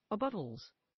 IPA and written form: əˈbʌtəlz (abuttals)